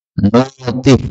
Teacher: Hamzahnya dihilangkan menjadi nu kemudian ti